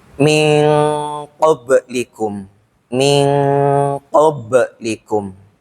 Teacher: Maksudnya ikhfa-nya itu sedikit, sedangkan unahnya itu lebih banyak, gitulah. Ikhfa-nya itu lebih pendek daripada gunnahnya.